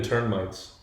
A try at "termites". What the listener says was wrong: You're saying turn-mites. You're adding an N in there after the... Termite. That's how you're saying it. You're saying termites. Termites. It sounded like you were saying termites.